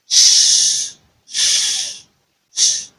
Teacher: So the first one is the voiceless palato-alveolar fricative. Voiceless because there is no vibration of the vocal cord during its articulation. Then palato-alveolar is the organs of articulation. · This describes the organs of articulation, which is the hard palate as well as the alveolar ridge. Then fricative because it makes a hissing sound or sibilant sound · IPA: /ʃ/